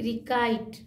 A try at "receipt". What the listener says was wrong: अरे भाई सी को सा बोलेंगे यहाँ पर, रिसी रिसीट समझ गया है ना, सी रिसीट रिसीप्ट लोग इस वर्ड को रिसीप्ट पढ़ते हैं लेकिन रिसीप्ट अगर पढ़ रहे हैं तो आप सुधार लीजिए, क्योंकि ये रिसीप्ट नहीं रिसीट पढ़ा जाएगा।